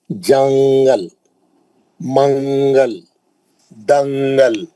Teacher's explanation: دنگل, دنگل نہیں پڑھتے, دنگل. نون کی آواز کو چھپا دیتے, نون کی آواز کو چھپا کے پڑھتے.